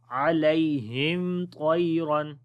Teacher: اظہار شفوی ہوگا، اور طا کو موٹا پڑھیں گے، عَلَيْهِمْ طَيْرًا، طا کو موٹا پڑھیں گے، یا حرف لین ہے، نرمی کے ساتھ پڑھیں گے